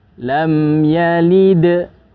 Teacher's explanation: Karena dal hurufnya tipis, maka begitu berhenti dia menjadi qalqalah itu pun tetap tipisnya seperti itu ya. Lam yalid. Jadi tidak ditebalkan.